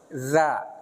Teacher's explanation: D itu dijepit antara gigi seri atas dan bawah